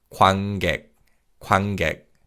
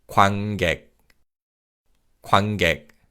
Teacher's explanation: When you say this word, the 니은 받침 is pronounced as an 이응 sound, so it's 관객, 관객.